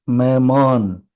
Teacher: பொதுவாவே ஹா தனித்து எங்கெங்கெல்லாம் வருதோ அதாவது மாத்திரை இல்லாம வருதோ அங்கெல்லாம் அது வந்து கொஞ்சம் சைலெண்ட் ஆயிரும் கொஞ்சம் அப்படி லேசா வாசிக்கிற மாதிரிதான் இருக்கும் அழுத்தி ஸ்ட்ரெஸ் கொடுத்து வாசிக்கக்கூடாது சரிங்களா